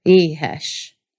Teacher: Basically, you're going to make a really, really breathy vowel sound instead of no sound at all. Really, it's just a particularly sloppy H. · Really, it's just a particularly sloppy H. Since it's surrounded by buzzing vowel sounds, you just keep buzzing all the way through it.